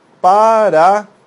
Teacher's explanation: Você vai ter ali três vogais que não vão se separar na hora de fazer a pronúncia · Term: tritongo